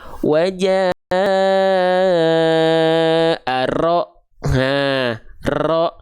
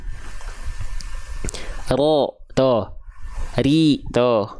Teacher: Dia punya sifat bergetar, tapi karakter getarannya bukan getaran yang berlebihan sebagaimana kita melafalkan huruf R pada abjad alfabet. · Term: takrir